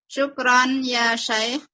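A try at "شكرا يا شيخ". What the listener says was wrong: Bukan, syukron ya syekh. Atau boleh syukron ya syekhu. Ya, perhatikan intonasinya lagi ya nanti ya. Mana kapan pertanyaan dan kapan buat kalimat berita.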